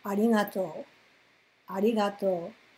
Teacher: Pronounce it without moving your head or your voice up and down, in other words.